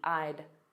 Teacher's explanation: those contractions which are difficult to hear, I had, a very soft D, I'd.